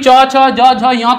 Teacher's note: च, छ, ज, झ, ञ का जो है वह तालु है